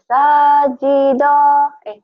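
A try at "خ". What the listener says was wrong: Titiknya salah. Titiknya salah. Khi.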